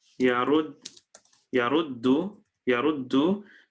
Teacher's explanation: these two dals are again going to assimilate and become one. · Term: idgham